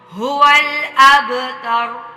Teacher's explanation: شانئک ہول، اب کلکلا کرنا ہے، با پہ حروف کلکلا میں سے ہے تو اس پہ کلکلا کرنا ہے۔ اب تر، تا، را موٹی، تا کو موٹا نہیں کرنا، را کو کرنا ہے